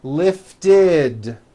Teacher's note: we add the ending id, which is a vowel I followed by a D, which is voiced.